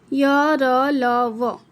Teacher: जिन अक्षरों के उच्चारण में जिह्वा मुख के विभिन्न भागों को पूर्ण रूप से स्पर्श न करे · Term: अंतस्थ सेमी वॉवेल